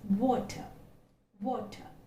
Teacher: the lips are getting rounded